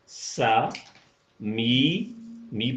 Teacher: میم کے نیچے زیر ہے اور ساتھ چھوٹی یہ ہے تو یہ یائے معروف کی پوری آواز ہو جائے گی